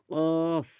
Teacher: জীভের গোড়া এবং তার বরাবর উপরের তালুর সাথে লাগিয়ে উচ্চারিত হয় দুই নোক্তা ওয়ালা কফ।